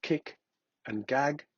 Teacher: Velar. Formed when the back of the tongue presses against the soft palate.